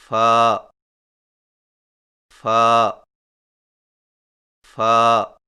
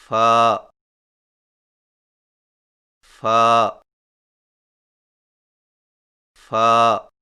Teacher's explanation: فا کی ادائیگی میں سامنے والے اوپر کے دو دانتوں کے سروں کو نچلے ہونٹ کے گیلے حصہ پر لگا کر باریک آواز میں پڑھیں